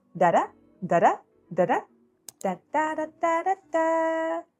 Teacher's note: This is a voiced sound that the tongue taps the alveolar ridge very quickly. So it sounds like a quick d, d, d. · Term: alveolar flap or tap